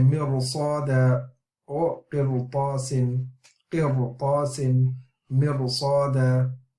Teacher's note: because there's a isti'la letter afterwards, tafkhim letter afterwards, then it forces the ra to become also the tafkhim.